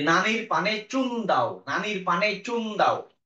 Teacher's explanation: দন্ত মূলীয় দাঁতের ঠিক গোড়া টাচ করবে